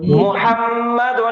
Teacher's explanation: میم کے اوپر پیش ہے تو ہونٹ گول کر کے محمد